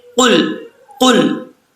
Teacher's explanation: कौफ को पढ़ते हुए आपने पुर पढ़ना है, इसको बरीक नहीं पढ़ना